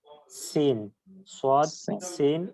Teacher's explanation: জিহ্বার আগা নিচের দাঁতের গোড়ার সাথে লাগিয়ে সিন